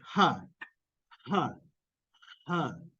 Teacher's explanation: you have air creating friction between your vocal Folds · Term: glottal fricative